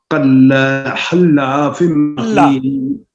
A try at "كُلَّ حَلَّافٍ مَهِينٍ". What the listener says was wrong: لا کلا نہیں، کلا كل حلاف.